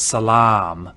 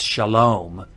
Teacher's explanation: if you know the Arabic word for peace it's Salam and that long ah in Arabic is now an o in Hebrew